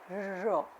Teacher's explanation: sounds produced with the tip of the tongue and the roof of the mouth, especially the area in between the alveolar ridge and the soft palate. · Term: Post-alveolar sounds